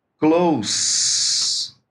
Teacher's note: a pronúncia de S aí o significado é outro próximo então se eu falo essa palavra com som de s Close aí significa próximo